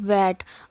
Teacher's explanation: in pronouncing the word vet when we pronounce v we feel vibration · While pronouncing the word vat, now observe whether you feel vibration or not. Now in pronouncing the word vat, when we pronounce v, we feel vibration, so that is why it is called voiced consonant.